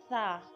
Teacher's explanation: सा र्फ को नरमी के साथ पढ़ते हैं ताकि सीटी की आवाज ना आए बाज औकात जब हम सा को पढ़ते हैं तो इस तरह